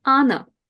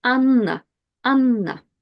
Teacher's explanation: When you have a double consonant in Russian, you just pronounce it longer. So if I had just one N, it will be Anna.